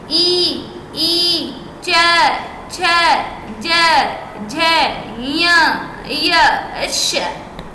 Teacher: जो हमारी जीभ है वो अंदर के साइड में दांतों से थोड़ी सी ऊपर टच हो रही है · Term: तालू